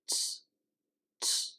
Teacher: We get that N sound toward the end, and the Z sound doesn't come through with a lot of the vibration that you would normally get. Instead, it's just surrendering into this sort of tss, tss sound.